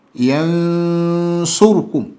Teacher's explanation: Hii hapa pana hukumu ambayo ni ikhfa. Ikhfa al-haqiqi yansurukum. Hapa panatakiwa pasome kwa ghunna.